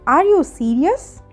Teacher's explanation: ఇది yes ఆర్ no question, that's why sentence ఎండింగ్లో నా వాయిస్ రైజ్ అయ్యింది. అండ్ సెంటెన్స్ ఎండింగ్లో లాస్ట్ వర్డ్ ముందు రైజింగ్ టోన్ సింబల్ అంటే అప్వర్డ్ యారో పెట్టాలి. · ఇలా ఎస్ ఆర్ నో క్వశ్చన్స్ అడిగినప్పుడు మన వాయిస్ ఎండింగ్లో రైజ్ అవుతుంది.